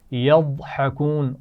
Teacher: یضحکون ضاد کو موٹا پڑا جائے گا